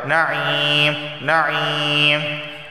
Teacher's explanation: یا ساکن سے پہلے زیر آیا ہے تو اس وجہ سے صرف یہاں پر ایک الف کے برابر اسے کھینچ کر پڑھا جائے گا